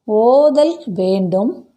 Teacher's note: ஓதல் என்பதில் சொல்லுக்கு முதலிடத்தில் நெடில் எழுத்து அளபெடுத்திருப்பதை பார்க்க முடிகின்றது அதற்கு சான்றாக அந்த நெடில் எழுத்துக்கு இனமான குறில் எழுத்து அதன் பக்கத்தில் எழுதப்பட்டுள்ளது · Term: இசைநிறை அளபெடை